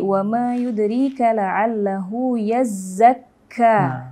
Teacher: huruf zai, huruf kafnya itu ketika ada tasdid, maka membacanya itu lebih lebih tegas gitu, karena kan ada lebih tebal, lebih tegas karena ada tasdid atau syiddah di situ.